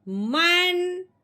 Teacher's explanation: اب ہم نے نون ساکن پہ غنہ نہیں کرنا، بغیر غنے کے اظہار کے ساتھ پڑھنا ہے